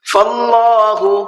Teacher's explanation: اللہ کے لام کو پر کر کے پڑھنا ہے، اس لیے کہ اللہ کے لام سے پہلے زبر ہے